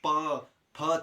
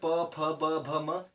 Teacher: जितने भी प से शुरू होते हैं उनका है ओष्ठ उच्चारण स्थान। देखो ओष्ठ, प फ छू रहे ना ओठ को, अब हम ओठ को अगर नहीं मिलाए तो हम नहीं बोल सकते, ठीक है।